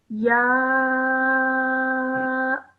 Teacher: you have a ya with a vertical fatha, again with a madhu saghir on top of it. So stretch this sound out for around 3 to 5 seconds